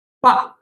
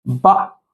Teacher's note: the fourth tone, yeah, which is also called the falling tone. ba, it falls, right? It goes downward.